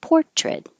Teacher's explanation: the noun has stress on the first syllable